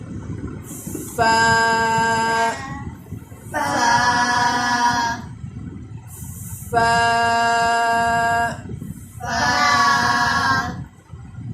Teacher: اوپر والے جو دانت ہیں ان کو نیچے والے ہونٹوں کا وہ حصہ جہاں پر تری ختم ہو رہی ہے اور خشکی جو خشک جگہ ہے وہ شروع ہو رہی ہے، وہاں پر رکھیں گے اور ہونٹ کو اور دانتوں کو تھوڑا سا دبائیں گے اور دانتوں اور ہونٹ کے درمیان میں سے تھوڑی سی ہوا نکلے گی۔ ہم جب اس کو حرف کو ادا کریں گے تو ہوا نکلے گی، تو اس طرح حرف فا ادا ہوگا۔